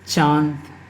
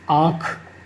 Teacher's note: इसमें जो हमारा श्वास होता है ये मुख प्लस नाक दोनों के द्वारा बोले जाते हैं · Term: अनुनासिक